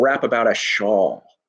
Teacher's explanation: very very are all syllables with very very short duration but rap even though it's mono syllabic is actually very long and shawl is really really long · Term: long duration